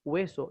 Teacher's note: una H que en el castellano latinoamericano prácticamente no suena, salvo algunas excepciones